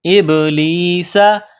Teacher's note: سین میں سیٹی کی آواز پیدا کرنی ہے. ابلیسا.